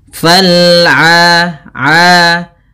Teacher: Huruf ain usahakan jangan sampai masuk rongga hidung, dan ain sendiri punya bacaan mad tabi'i, yaitu a-nya panjang